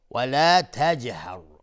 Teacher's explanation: جیم قلقله میخواد چون ساکنه